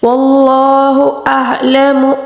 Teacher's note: عین کو حلق کے درمیانی حصے سے ادا کریں گے